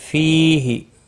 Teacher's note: فی یا مدہ ہے، 1 الف کے برابر کھینچ کر پڑھیں گے